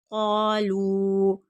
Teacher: क़ाफ हर्फ मुस्तालिया खींच कर पढ़ेंगे, लाम पर मद होगी, 3 अलिफ की मिक़दार के बराबर, मद मुनफसिल है।